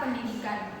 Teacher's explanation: didik yang mengalami perubahan bunyi karena adanya bunyi nasal N di depan D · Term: asimilasi